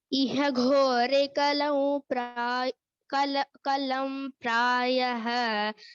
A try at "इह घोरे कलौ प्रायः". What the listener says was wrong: Kalam no. Kalau, my dear. Where is Anuswara? Kalau. See, iha ghore kalau and not kalam.